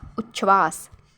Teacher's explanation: That's why उत जोड़ श्वास हो जाएगा उच्छ्वास। उच्छ्वास में जो च है वो त के स्थान पर आया है और जो छ है वो तालव्य श के स्थान पर आया है। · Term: व्यंजन संधि